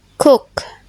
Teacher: Both are velar plosive, made by raising the back of the tongue to the soft palate.